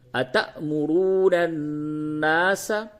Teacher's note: نون کے اوپر تشدید ہے، غنہ ہوگا